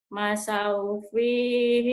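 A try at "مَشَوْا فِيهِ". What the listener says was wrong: Shin. Masyau.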